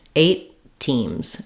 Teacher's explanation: of them or if I am saying eight teams for example I can link that together and just do one t- sound this one gets unreleased eight teams and I release it on